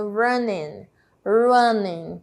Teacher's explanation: percebo como eu não faço a pronúncia da letra g